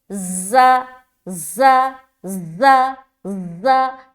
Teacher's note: زا میں ایک قسم کی سختی ہوتی ہے اور اس میں ایک سیٹی نما آواز بھی ظاہر ہوتی ہے ، جیسے کہ زا، زا، زا، زا، سختی بھی اور سیٹی